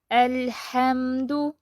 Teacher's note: اب لام ساکن جو ہے اس کو ہم درمیانی کیفیت سے پڑھیں گے، نہ آواز چلتی رہے گی نہ آواز بند ہو جائے گی۔